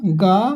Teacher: वहीं सघोष अल्प प्राण की बात करेंगे तो गा आ जाएगा आपका